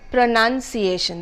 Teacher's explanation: the stress is on the second syllable the first syllable is PR o the second one is n